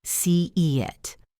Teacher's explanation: Your mouth is wide. When you move to the next vowel, your tongue moves and creates a Y sound. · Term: Y bridge